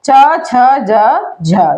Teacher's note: ये हमारे जो तालू से बोले जाते हैं स्पर्श संघर्षी व्यंजन कहलाते हैं